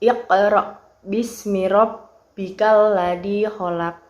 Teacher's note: Nah, di awal itu kan ada iqra. Di situ terdapat huruf qaf yang diwakofkan di tengah kalimat. Nah, ini dinamakan qalqalah sugro.